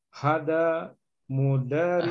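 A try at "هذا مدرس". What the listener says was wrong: Hanya agak dipanjangkan, Pak. Hadza mudarrisun.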